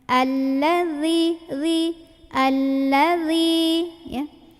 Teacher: Jadi jangan dibaca allazi, jangan juga alladzi, melainkan allazi. Ujung lidahnya melet dikit ketemu ujung gigi yang atas ya, gigi seri yang tengah ya. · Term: huruf dzal